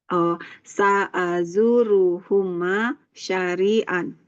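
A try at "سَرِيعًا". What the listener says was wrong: Sarian, bukan pakai shin tapi sin. Sin biasa. Sarian.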